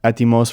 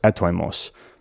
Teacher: But this is specifically a modern pronunciation because the ancient Greek teachers would say the word is pronounced etoimos. Whereas in modern Greek, the oi diphthong is just pronounced e